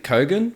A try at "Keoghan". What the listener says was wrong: I thought it was Keegan, man. I thought it was Barry Keegan. I think the O is silent. I think it's Barry Keegan.